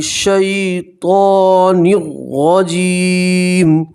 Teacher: نون کو را سے ملیں گے، تنوین نہیں پڑھیں گے، صرف ایک زیر پڑھیں گے۔ را کے اوپر زبر ہے، را کو موٹا پڑھیں گے، پور پڑھیں گے۔